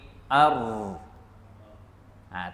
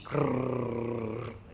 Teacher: Kemudian satu sifat yang khusus hanya ada pada ra, iaitu takrir. Takrir ni iaitu getaran yang bunyi pada ra.